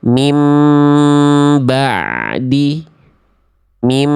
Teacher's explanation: Tapi bunyi ainnya itu dilafalkan suaranya bukan dipantulkan ya tapi dialirkan sedikit. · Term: huruf ain